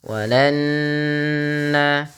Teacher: tahan bunyi suara nunnya karena dia guna